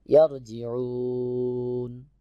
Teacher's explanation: যখন আমি ওয়াকফ করব তখন নুনে সাকিন হয়ে যাবে, বা এখানে যে হরফ থাকে সেই হরফে সাকিন হয়ে যাবে।